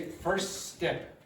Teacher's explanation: The T completely disappeared. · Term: elision